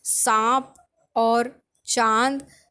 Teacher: चंद्र बिंदु का उच्चारण जो होता है वो नाक व मुंह से होता है, इसीलिए उसे अनुनासिक कहते हैं। जैसे हम कहते हैं सांप और चांद, तो ये जो आ का स्वर है वो हमारे नाक और मुंह दोनों का हम उसमें यूज़ करते हैं उसे बोलने के लिए, इसीलिए हम उसे अनुनासिक कहते हैं।